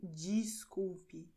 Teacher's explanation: a combinação DES, muitas vezes ela é pronunciada como DIS